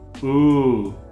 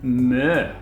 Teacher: when you pronounce the Ø, you make the sound at the back of your mouth and not the front. If you try to make the sound with the front of your mouth, it sounds like ooh.